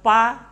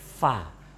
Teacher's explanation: Kalau pa, nah itu anginnya nggak keluar, tapi fa lembut ya.